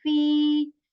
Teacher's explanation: I'm stretching E sound here for 2 counts because there is ya madda here.